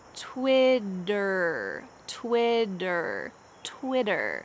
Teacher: in american english the t's in the middle of this word change to a d sound